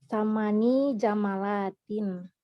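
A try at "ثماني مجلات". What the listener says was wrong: Bukan jamalat ya, ini berubah ya. Majalat. Majalat.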